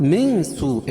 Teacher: تو یہاں ناک میں آواز کو چھپا کر پڑھیں گے، اور اس کے بعد مد متصل ہے کیونکہ حروف مدہ کے بعد یہ حمزہ جو ہے اسی کلمے میں ہے، یہ سو یہ ایک ہی کلمہ ہے، یہاں توسط اور طول ہے، یعنی 2 الف سے لے کر 5 الف تک اس کو کھینچ کے پڑھ سکتے ہیں۔ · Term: اخفا حقیقی